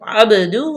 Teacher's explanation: یہاں پہ اظہار کریں گے، محمدن عبدہ، عبدہ، با پہ قلقلہ، با ساکن ما قبل مفتوح ہے تو با پہ قلقلہ کریں گے